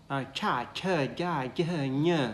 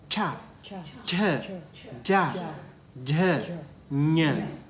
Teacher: the tongue goes up, kind of pops up, and then touch the upper palate, and then the air squeeze through that. Then only that sound comes.